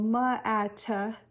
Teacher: now you're again adding that schwa sound at the end